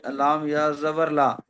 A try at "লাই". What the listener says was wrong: লা হয় না, লাই। এখানে হয়েছিল হামজা ইয়া জবর আই, বা ইয়া জবর বাই, তা ইয়া জবর তাই। তো সেই হিসাবে সব হাকার হর্ষই উচ্চারণ হবে। তো লাম ইয়া জবর লাই, মিম ইয়া জবর মাই, এইরকম ভাবে পড়তে হয়।